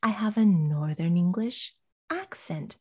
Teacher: under normal or neutral conditions she would say i have a northern english accent stressing accent